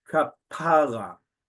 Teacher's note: Any of these are understood so long as the emphasis, and listen again, the stress, kapara, second syllable stress, not the last syllable